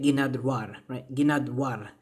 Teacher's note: even though we're not pronouncing the ra, we still get ginadwar